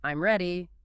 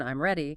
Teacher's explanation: If you say it with a falling tone, I'm ready, it's a statement, but if you say it with a rising tone, I'm ready, it becomes a question even though the words are identical. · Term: intonation